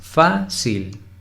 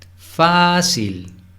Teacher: La sílaba tónica es la primera.